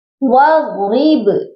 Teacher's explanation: با پر قلقلہ کریں گے، کیونکہ با حروف قلقلہ ہے، اور جب یہ ساکن ہوتے ہیں حروف قلقلہ تو ان پر قلقلہ لازمی کیا جاتا ہے۔